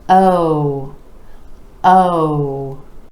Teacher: own the Oh as in gold or no for this sound you want to make sure those lips are really rounding out and stretch the sound give it a little more duration